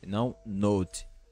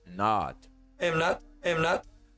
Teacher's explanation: o T não vai ser pronunciado e o O é com som de A